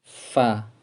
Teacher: Jadi bibir bawah bagian dalam mengenai ujung gigi seri atas. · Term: huruf fa